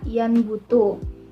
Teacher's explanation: huruf nun di sini berganti menjadi huruf mim karena terpengaruh oleh huruf ba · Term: asimilasi parsial